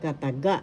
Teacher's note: The third syllable has the accent kataga.